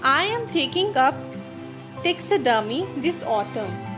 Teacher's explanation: Ta in taxidermy and a in autumn is used as a high rise tone.